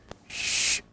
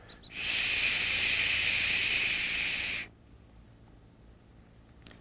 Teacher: the specific sound for the liver is SH with a hint of a U at the end